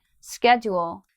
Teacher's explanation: the second syllable it disappears when I'm speaking quickly